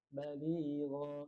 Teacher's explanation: Jadi pas mau ngeluarin gha-nya itu berat.